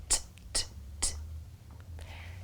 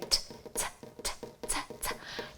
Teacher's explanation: you stop the air by lifting the tip of your tongue up just behind your top teeth and then let go. If you make a few t sounds in a row, it feels as though your tongue is tapping against the roof of your mouth. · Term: tongue tapper sounds